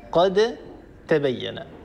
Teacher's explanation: الدال ساكنة والتاء التي بعدها متحركة هنا ندغم الدال في التاء لأن الدال والتاء من مخرج واحد كلاهما من طرف اللسان مع أصول الثنايا العليا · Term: الحرفين المتجانسين